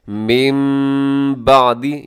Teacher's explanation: کیا ہے، میم بعدی، یہاں پہ پھر اقلاب ہو رہے ہیں، نون ساکن کے بعد با ہے تو نون کو میم کے ساتھ تبدیل کر دیا جاتا ہے